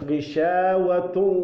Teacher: اس کو ادغام کہتے ہیں کہ یہ ناک میں پوری طرح آواز چلی جائے